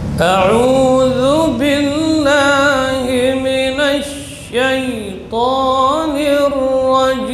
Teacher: Ar-rajim, huruf jim syiddah dan jahar. Jadi tidak boleh lepas udaranya, bukan cim tapi jim, tertahan ya, bagian tengah lidah menempel pada langit-langit atas.